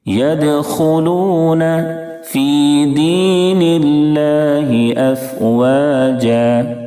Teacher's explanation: دونوں جگہ یا مدہ ہوگی. یا مدہ کو 1 الف کے برابر کھینچتے ہیں. تقریباً 1 سیکنڈ کھینچیں گے.